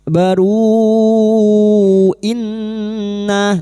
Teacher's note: nun yang bertasdid guna musyaddadah kita dengungan selama 3 harokat